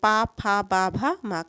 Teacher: अगर हम बोलते हैं तो दोनों ओठ ऊपर नीचे जो दोनों ओठ बने हैं हमारे ये दोनों आपस में मिलते हैं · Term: ओट ध्वनियां